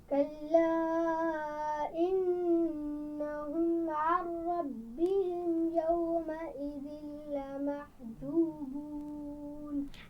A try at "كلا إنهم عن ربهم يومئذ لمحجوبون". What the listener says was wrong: انہم عن ربہم یعنی میم کی آواز پہ قلقلے جیسی آواز نہیں آنی چاہیے. انہم ایسے نہیں پڑھیں گے. انہم عن ربہم پڑھیے. ربہم کی میم پر غنہ نہیں ہوگا، کیونکہ میم ساکن کے بعد میم ہو یا با ہو وہاں پر ہم غنہ کرتے ہیں، یہاں پر نہیں ہے، تو اس لیے اس پہ ربہم پہ رکنا نہیں ہے.